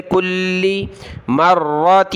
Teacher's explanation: کلی سخت کریں گے لام کو تشدید کی وجہ سے